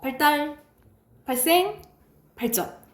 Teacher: 한자입니다. 한자 리을 뒤에 디귿 시옷 지읒이 된소리가 나는데